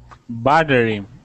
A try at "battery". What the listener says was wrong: Good. Battery.